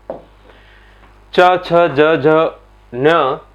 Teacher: च, छ, ज, झ, न का उच्चारण होता है तालु से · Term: च वर्ग